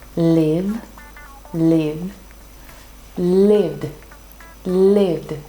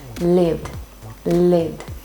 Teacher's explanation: the V sound becomes very, very subtle and you go straight to the D sound